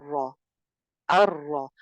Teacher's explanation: را کو آپ نے ایک بار ہی ادا کرنا ہے، را، لیکن آواز پھر بھی کپ کپاتی ہے. زبان کے اوپر جو ہے نا وہ کپ کپی آ جاتی ہے. · تکرار تو ہوگی ہی ہوگی کیونکہ اس کے اندر یہ صفت ہے کہ زبان پہ کپ کپی اور لرزہ طاری ہوتا ہے، لیکن حقیقی تکرار نہیں ہوگی بلکہ مشابہت ہوگی.